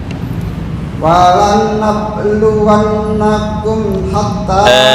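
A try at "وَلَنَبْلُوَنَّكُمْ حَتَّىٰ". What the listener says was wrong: Sebentar, ba qalqalahnya agak ringan. Wala nabluwan yang ringan. Nah, ini ba tisu ya, anggap aja ini tisu. Kalau baca ba wala nab, berarti kurang pas. Ini nggak boleh terbang. Wala nabluwan wala nab. Tapi kalau baca wala nab, nah, itu makhrajnya kurang pas ya.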